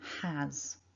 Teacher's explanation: we spell it with an S, but it's actually pronounced with a voiced Z sound